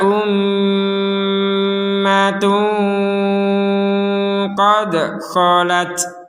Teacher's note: tanwin bertemu Q kita bacanya dengan samar